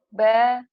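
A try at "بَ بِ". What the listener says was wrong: Babi, Bu. Babi, Bu. Kelamaan. Babi, Bu, gitu.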